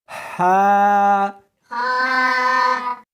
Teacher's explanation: اس کو حلق میں سے نکالنا ہے اور ساتھ میں ہوا بھی ہونی چاہیے. ہا ہاں نہیں پڑھنی بلکہ اس کو حلق میں سے نکالنا ہے، سینے میں سے نہیں نکالنا۔